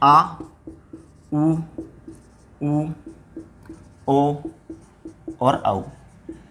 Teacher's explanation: इनका जब आप उच्चारण करेंगे तो देखेंगे आपकी जिह्वा का जो पश्च भाग है वो सक्रिय होता है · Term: पश्च स्वर